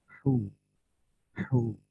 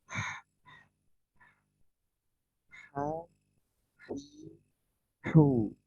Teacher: suara kayak orang capek gitu ya, atau suara orang desah, ya, suara kayak orang capek.